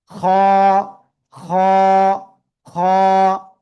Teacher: এই যে গলা না, এই গলার শেষ ভাগ থেকে এই অক্ষরটা এক আলিফটা নিয়ে মোটা আওয়াজে উচ্চারণ করতে হয়।